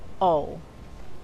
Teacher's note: La O en la palabra over es como la O del español, pero es más prolongada